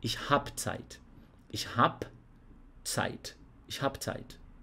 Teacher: os alemães eles vão eliminar essa letra E do final do verbo